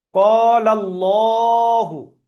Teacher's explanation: তো আল্লাহর লামের পূর্বে জাবার এসছে তাই লহু পড়লাম, লাহু পড়লে ভুল হবে